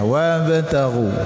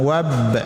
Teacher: Qalqalah sugra jadi sedikit saja pantulan